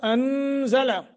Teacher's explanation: نون ساکن کے بعد زا اخفا کریں گے